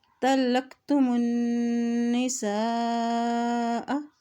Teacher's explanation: हमज़ा के ऊपर मद है तो इसको लंबा अदा करेंगे · जब भी नून के ऊपर शद आती है तो वहाँ पर गुन्ना भी अदा किया जाता है